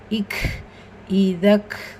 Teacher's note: காப் சுகூன் பெற்று வந்திருக்கு ஹம்ஸ் உடைய சட்டம் காற்றை வெளிப்படுத்தணும்